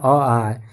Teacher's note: अ और आ यह दोनों है ना अ आ इसका उच्चारण कंठ से होता है